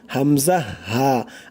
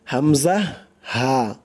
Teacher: মানে গলার শুরু হইতে হামজা হা দুইটি অক্ষর উচ্চারিত হয়